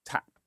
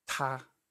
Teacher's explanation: So if you say ta, and then the word in English, tap, ta, tap, ta, there should be more breath when you're saying the ta sound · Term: aspirated